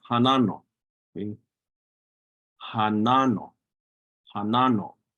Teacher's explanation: stress on that second syllable na